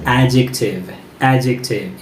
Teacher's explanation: word is pronounced as adjective adjective it's not adjective it's adjective whenever there is d and j together so d silent and we say adjective stress on the first syllable